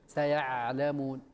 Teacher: حرف العين واللام من الحروف البينية كما قال ابن الجزري، وبين رخو وشديد